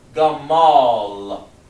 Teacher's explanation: So you need that that vowel sound. But when you connect it with an L, you drop the A